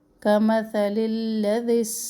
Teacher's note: ذال جو ہے وہ نرمی سے پڑھا جانے والا ہے، سین جو ہے وہ سختی سے، اور سیٹی کی آواز اس میں ہونی چاہیے